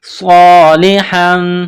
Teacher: وعامل وعامل صالحا، صاد الف زبر صا، صاد میں سیٹی کی آواز پیدا کرنی ہے